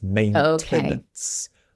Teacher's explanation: The pronunciation in the UK in British English we do pronounce the T.